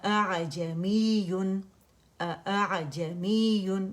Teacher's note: اب یہ جو میں نے غیر واضح نکالی ہے نا، اس کو ہم نے، اس والی حمزہ قطع کو ہم نے اسی طرح نکالنا ہے، یعنی نہ تو ہم نے اس کو الجوف سے نکالنا ہے، نہ اقص الحلق سے نکالنا ہے، ان دونوں کے درمیان سے غیر واضح نکالنا ہے. آ کی ساؤنڈ نہیں آنی چاہیے، مد نہیں بنائیں گے، الف نہیں بنائیں گے، اسٹریچ نہیں کریں گے